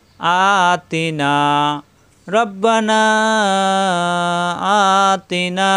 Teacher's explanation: আ এক আলিফ টান, তি টান নাই, না আবার এক আলিফ টান